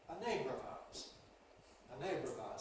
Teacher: because the syllabic consonant /r̩/ is now followed by a weak vowel in ‘of’ /əv/, it can lose its syllabicity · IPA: /ə ˈneɪbrəv ₒaʊəz/